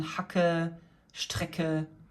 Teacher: CK as in Hacke, Strecke, a very hard K that you would pronounce in the back of your throat